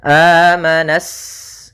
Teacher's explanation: alif lam syamsiyah yaitu alif lam yang ditulis tapi tidak dibaca sehingga kita langsung masuk ke huruf sinnya